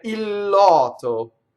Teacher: if you have one word that ends in L and the next word begins with L, it's pronounced like it's one word with a double consonant.